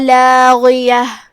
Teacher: کلمت لاغیہ یہاں حرف الغین ہے. غین کی ادائیگی حلق کے اوپر والے حصے سے